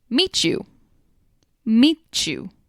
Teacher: the CH sound where a t and Y sound usually are